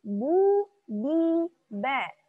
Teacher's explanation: Jahar. Tertahan udaranya. Jadi ketika mengucapkan huruf ba, mesti ditahan.